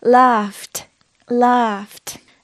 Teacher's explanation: This is what's called the voiceless ending. So it uses a t instead of a d.